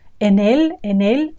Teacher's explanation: And en él, notice how we join these two words. En él, that is definitely just one word.